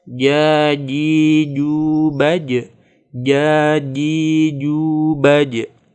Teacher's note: Hati-hati ketika bertemu idhar komari, alif lam bertemu jim, jangan sampai terjadi tawallud. Dan juga membaca huruf jim tidak boleh keluar desisnya